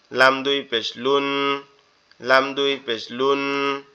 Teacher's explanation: স্বাভাবিকভাবে জিহ্বার আগা উপরের তালুর সাথে লাগবে